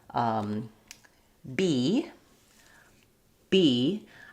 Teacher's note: I can't hold the B sound because it's totally closed off and releasing. It's called a stop or a plosive sound. · So when we're talking about the B sound, I have to put my lips together and stop the air completely and then burst it out.